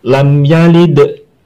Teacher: Jadi kalau ada huruf qalqalah sukun tapi tidak posisi wakof atau berhenti, nah ini namanya qalqalah sugro, qalqalah yang kecil, tetap memantul tapi tidak terlalu besar. Beda dengan yang pada posisi wakof atau berhenti.